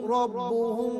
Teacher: یبشرہم ربہم، یہاں پر بھی را پر زبر ہے تو را کو پر کر کے پڑھا جائے گا، اور با پر تشدید ہے، جماؤں کے ساتھ ادا کریں گے